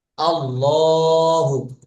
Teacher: লাম এর ডাইনে জবর বা পেশ হইলে আল্লাহ শব্দকে, আল্লাহ শব্দের লামকে পুর করিয়া পড়িতে হয়।